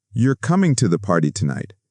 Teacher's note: My voice went down at the end.